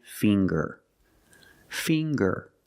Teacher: we see the nasal sound plus the hard G